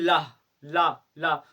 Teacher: इनके बोलते समय वायु का निष्कासन होता है जीभ के दोनों तरफ से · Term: पार्श्विक व्यंजन